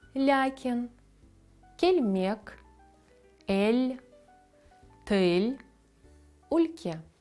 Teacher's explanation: Вимовляється, наче там є м'який знак. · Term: м'яке Л